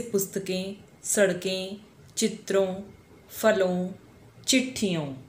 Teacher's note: जब हम इन शब्दों का उच्चारण करते हैं तो आवाज मुंह और नाक दोनों से निकलती है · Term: अनुनासिक